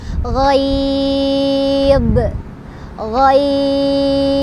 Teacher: ba-nya disukunkan, ba-nya punya qalqalah, harus dipantulkan, dan ghai-nya itu jadi panjang. Panjangnya sama kayak yang di atas, boleh 2, boleh 4, boleh 6.